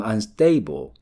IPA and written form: ʌnˋsteb! (unstable)